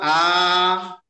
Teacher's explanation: হামজা হামজা খারা জবর আ, হামজার ওরফে খাড়া জবর এসেছে, তাকে এক আলি পরিমাণ টান দিয়ে পড়িতে হবে